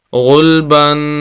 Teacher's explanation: آخری لفظ اس لائن کا غین پیش لام غل، با 2 زبر بن، غلبن آخر میں تنوین ہے اور غنہ کریں گے ناک میں آواز جائے گی